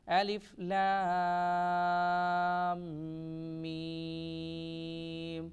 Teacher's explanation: الف لام، لام کو لمبا کریں گے 5 الف کی مقدار میں، اور لام کو جب میم کے ساتھ ملائیں گے تو یہاں پر غنہ کریں گے، میم کی آواز کو تھوڑا ناک میں لے کر جائیں گے اور میم کو بھی لمبا کریں گے 5 الف کی مقدار میں۔